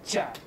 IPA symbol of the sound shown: č